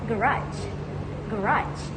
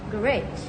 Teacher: British English often stresses the first syllable of French origin words. On the other hand, American English tends to stress the last syllable. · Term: primary stress position